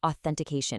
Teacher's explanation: It requires a very crisp, clear, voiceless th sound to really sound professional.